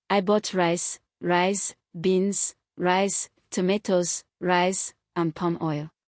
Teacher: For the rising tone on each item except the last signals that more items are coming. The final falling tone signals the list is complete.